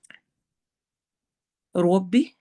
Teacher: رب ارحمہما کما ربیانی صغیرا، اے میرے رب رحم کیجئے ان دونوں پر جیسا کہ ان دونوں نے بچپن میں مجھ پر پرورش کرتے ہوئے کیا، یا جس طرح انہوں نے میری پرورش کی بچپن میں جس محنت کے ساتھ کی۔ ربی، روا کو موٹا پڑھنا ہے، ربی، بی کو لمبا نہیں ہونے دینا